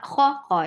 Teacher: Kha is heavy for fatha open jaws.